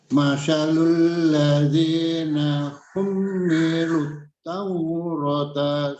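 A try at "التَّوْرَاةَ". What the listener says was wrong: At-Taurata. Ro dibaca panjang.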